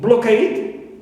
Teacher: So cade is stressed. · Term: primary stress